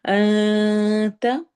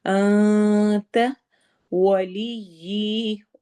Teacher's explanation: انت نون میں ہم نون کی آواز کو چھپا کے پڑھیں گے، انتا کر کے نہیں پڑھیں گے